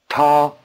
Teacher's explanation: Notice the extra explosiveness of the T.